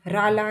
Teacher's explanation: रा ला के लिए होता है दंत मूल